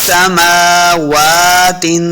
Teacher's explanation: आगे मीम के ऊपर और वाव के ऊपर खड़ी हरकत हैं, तो हमने इनको 2 हरकत लम्बा करना है। समावा सिर्फ वाव के ऊपर लम्बा नहीं करना।